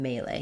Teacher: we just say it with the same vowel in both the first and last syllable um but stressing on the may · we have first syllable stress, the may syllable is stressed.